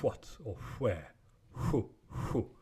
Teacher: It's bilabial, so the lower lip does not touch the upper teeth. It's really just a voiceless W